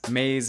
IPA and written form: maᶦz (maze)